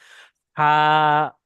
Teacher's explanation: গালটা বড় করে হা আওয়াজ, হা, যে ভিতরে যে হাওয়াটা আছে, হাওয়াটা গলার ভিতর থেকে বের করেন। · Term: বড় হা